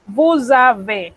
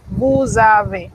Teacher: Esa S otra vez se convierte en Z y el avez lo pegamos con el vous a través de la Z.